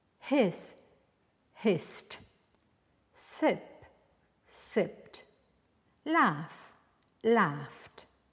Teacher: when the last sound of the verb is voiceless, like s, p, or f, you will tend to pronounce the ed ending as a t.